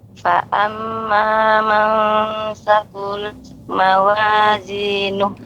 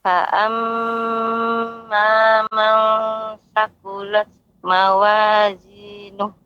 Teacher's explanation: Mim yang bertasydid ini termasuk gunnah yang akmal ma takun, yang gunnahnya sempurna, paling sempurna. Maka harus ada tempo.